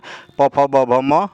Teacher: प, फ, ब, भ, म ये ओष्ठ ध्वनियाँ हैं।